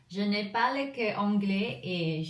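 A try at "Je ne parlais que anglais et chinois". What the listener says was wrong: Ouais, mais alors un moment, quand tu prononces. important de ne pas prononcer comme et. Je ne parlais que anglais et mandarin.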